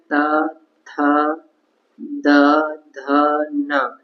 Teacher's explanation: इनका उच्चारण करते समय हमारी जीभ जो है वो दांत से टकराती है तो इसलिए इनका उच्चारण स्थान माना जाएगा दंत तो त वर्ग